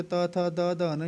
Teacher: ये हो गया आपके दंत्य वर्ण